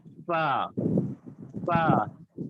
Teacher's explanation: اوپر کے دانتوں کے کنارے اور نچلے ہونٹوں کے تر حصے سے ادا ہوتا ہے